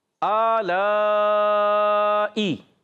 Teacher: اور یا مشدد ذرا رک کر بھی ادا کریں گے